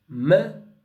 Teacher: The nose is open, the mouth is closed. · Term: Nasal sounds